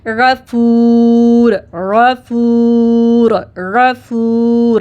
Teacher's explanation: غین heavy حروف اور نرمی، غین زیادہ ہم نے زور نہیں لگانا، سختی نہیں کرنی اس میں